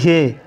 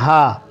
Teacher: हा कहें इसको हलक से अदा करें, ये है हे, हे जिसको हे बोलते हैं तो इसको भी आप अदा करें हा।